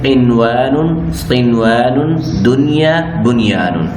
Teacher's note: ان کو ادا کرتے وقت نون ساکن کا واو اور یا میں ادغام نہیں ہوگا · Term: اظہار